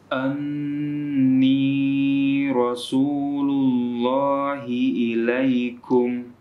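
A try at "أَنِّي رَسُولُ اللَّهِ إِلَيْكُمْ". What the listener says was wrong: Sedikit agak kepanjangan sedikit ya.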